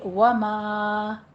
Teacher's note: ماں کہتے وقت آپ نے دھیان رکھنا ہے کہ ماں میں غنہ نہ آئے، ماں ناک میں آواز نہیں جانی چاہیے